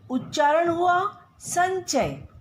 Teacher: च छ ज झ य, तो उच्चारण हुआ चंचल। संचय, स के ऊपर अनुस्वार का उच्चारण च वर्ग के अनुसार होगा।